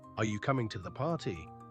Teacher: The voice will typically rise at the end showing it's a yes or no question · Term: intonation